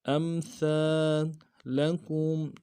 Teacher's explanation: امثالکم، لام کو نرم سے ادا کریں گے، کاف کو میم ساکن کے سامنے لانا ہے، میم ساکن میں غنہ کریں گے۔